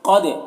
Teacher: قد میں قاف کو پر پڑھیں گے اور دال میں قلقلہ کریں گے